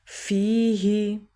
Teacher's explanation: یا سے پہلے فا کے نیچے زیر ہے تو یہ یا مدہ ہوا، 1 سیکنڈ کے لیے لمبا کریں گے